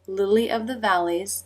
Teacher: tongue up in the L position, comes down, I as in sit, back up for the second L